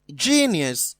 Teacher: genius is stressed on the first syllable